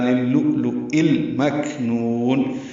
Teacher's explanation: پہ حمز اور نون میں نو کو لمبا کر دیں گے، وقفاً مد عارض للسکون بنائیں گے، آخر میں نون کے نیچے زیر ہے، یہ اس کو ساکن کر دیں گے